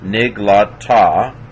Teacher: It's not a genuine H. So nig, that's a silent schwa, closes the syllable.